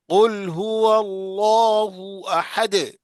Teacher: دیکھو اللہ کے لام سے پہلے زبر ہے، تو اس اللہ کے لام کو کیا پڑھیں گے؟ پڑھیں گے موٹا. پور پڑھیں گے، موٹا موٹا پڑھیں گے.